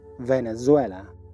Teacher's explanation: La V y la Z en inglés vibran.